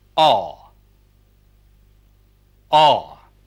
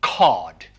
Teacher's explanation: another back vowel where the lips are slightly rounded